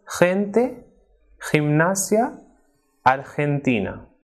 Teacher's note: But when it comes before the vowels E and I, it is strongly aspirated, like H.